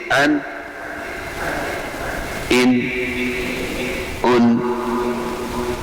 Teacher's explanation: آنی تھوڑا سا غنہ، معمولی سی آواز، ناک میں لمحہ بھر کے لیے جو آواز جاتی ہے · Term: غنہ آنی